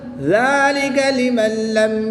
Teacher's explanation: نون ساکن کے بعد لام حروف رملون میں سے ہے تو یہاں پر ادغام بلا غنہ ہوگا، بغیر غنہ کے ادغام کریں گے۔